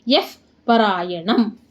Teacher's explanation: ಪರಮಂ ಯೋ ಬ್ರಹ್ಮ ಸ್ಟಾಪ್ ಮಾಡಿ, ಪರಮಂ ಯಫ್ ಯಾ ಮುಂದೆ ವಿಸರ್ಗ ಇದೆ, ವಿಸರ್ಗದ ಮುಂದೆ ಪಾ ಇದೆ, ಅದಕ್ಕೆ ವಿಸರ್ಗ ಏನಾಗುತ್ತೆ ಅರ್ಧ ಫಾ ಆಗುತ್ತೆ.